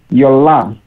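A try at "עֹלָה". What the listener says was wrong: So we want to make a yud here as opposed to an ayin, but it's actually an ayin. So it's silence, and we just pronounce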